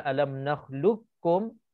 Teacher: lupakan qaf. Kita idghamkan qaf terus. Idgham kamil namanya. · Idgham kamil namanya. Idgham sempurna, masukkan qaf terus ke dalam kaf.